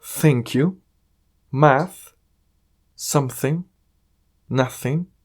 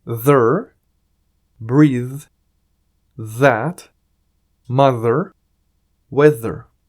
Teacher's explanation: Hay unas palabras que generan un poco de aire y otras que generan algo de vibración, pero la posición de la lengua es la misma.